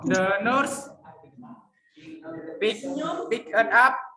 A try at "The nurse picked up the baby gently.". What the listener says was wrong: Bukan picket, tapi picked. The nurse picked up the baby gently. Jadi huruf D-nya ini disambung dengan kata up-nya ya. Kalau bule asli dia akan ngomongnya begini. The nurse picked up the baby gently.